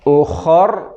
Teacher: را کو موٹا کریں گے